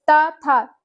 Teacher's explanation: थ यहां पर महाप्राण हो जाएगा।